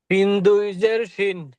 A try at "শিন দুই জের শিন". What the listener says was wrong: আর একটু, শিন দুই জের শিন। বাতাসটা একটু বের হবে, শিন না, শিন